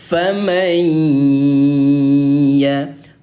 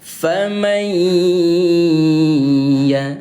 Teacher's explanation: bunyi ya yang bertasydid ini tahan atau dengungkan selama dua harakat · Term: idgham bighunah